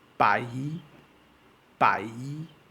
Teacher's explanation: notice there is an elongation on the Y sound